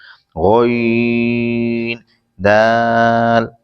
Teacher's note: غین حلق کے اوپر سے ادا ہوتا ہے اور دال زبان کی نوک اوپر کے دانتوں کی جڑ سے ادا ہوتا ہے۔